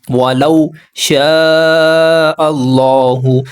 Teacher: ولو حروف لین ہے، نرم آواز سے جلدی پڑھیں گے